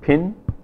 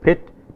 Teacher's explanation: but the vowel is a nasal vowel because the following sound is a nasal consonant